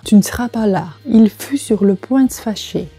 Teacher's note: В сочетании, когда между двумя беглыми «э» стоит «с», то есть «э» плюс «с» плюс «э», оба «э» опускаются.